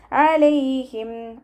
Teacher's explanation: അനിന്റെ sound വ്യക്തമാക്കിയിട്ട് ഉച്ചരിക്കുക ഹംസയുടെ sound ആയി പോകാതെ നോക്കുക തൊണ്ടയുടെ മധ്യഭാഗത്തിൽ നിന്ന് തന്നെ സൗണ്ടിനെ കൊണ്ടുവരാൻ ശ്രദ്ധിക്കുക